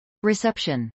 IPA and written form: rɪsˈɛpʃən (reception)